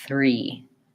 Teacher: To be able to say three, the front of my tongue does have to be in that TH position, but the back of my tongue is already starting to be tight, and I just pull the front back to finish the R sound.